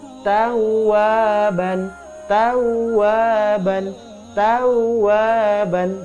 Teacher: rasakan huruf wau nya itu double